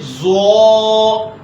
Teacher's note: زو جو ہے زو زبان کا سرا اور اوپر کے دانتوں کی جڑ سے ادا ہوتا ہے. یہ بھی اس کو بھی موٹا کر کے ادا کریں گے زو.